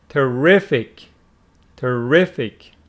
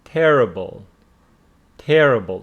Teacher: this one carries the stress on the second syllable making it terrific and this one on the first syllable making it terrible